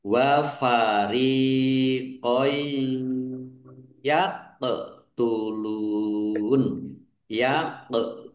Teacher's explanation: bertemu dengan huruf ya bacaan idgham bighunah masuk dengan mendengung yaitu mendengung ya ditandai ya ada tasdidnya ditahan biar tampak mendengungnya